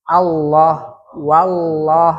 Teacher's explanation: Lam aslinya asalnya tipis. Tapi ketika lafzu jalal Allah, dia dibaca tebal.